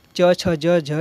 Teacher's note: च छ ज झ इस क्या कहलाते हैं स्पर्श संघर्षी व्यंजन कहलाते हैं